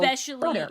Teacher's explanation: You're doing what's called an alveolar tap.